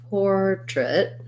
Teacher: even though this looks like it should be trait with an A vowel, we actually have first syllable stress here as well. So we have an or with a clear or vowel, and then portrait.